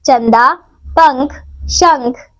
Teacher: किसी भी शब्द में व्यंजन के साथ स्वर की जिस मात्रा का प्रयोग किया जाता है, उसी की ध्वनि सुनाई देती है, जैसे किताब, क, छोटा ई, त, आ, ब, अ। अनुस्वार इसका उच्चारण नाक से होता है